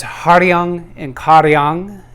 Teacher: and Caro young those two words you want to resonate because the ang at the end of the words resonates up here in the sinus